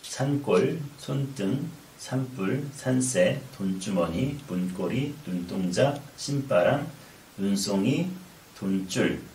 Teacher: 니은과 기역, 니은과 디귿, 니은과 비읍, 니은과 지읒이 만났을 경우에 이렇게 된소리가 나게 됩니다.